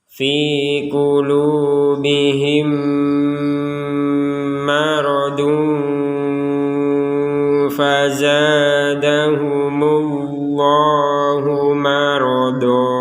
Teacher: Ya, huruf mim sukun yang sukunnya tidak tertulis, maka huruf mim ini tidak terbaca dengan jelas, tapi dimasukkan kepada mim yang berikutnya